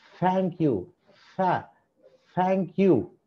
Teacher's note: నాలుక బయట వచ్చి గాలి కొద్ది కొద్దిగా ఎస్కేప్ అవుతూ ఉండాలి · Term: డెంటల్ ఫ్రికటివ్